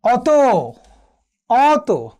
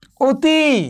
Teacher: একটি হচ্ছে এর স্বাভাবিক উচ্চারণ অর্থাৎ যেটি বিবৃত উচ্চারণ, আর একটি হচ্ছে বিকৃত উচ্চারণ যেটি সংবৃত উচ্চারণ অর্থাৎ এটি হচ্ছে ও এর মতো উচ্চারণ। · অ যখন অ এর মতো উচ্চারিত হয়েছে এটি হয়েছে বিবৃত উচ্চারণ অর্থাৎ এটি স্বাভাবিক উচ্চারণ।